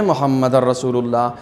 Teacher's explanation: نون ساکن کو آپ یہاں سے ختم کر کے اس را کے اوپر تشدید دے دیتے ہیں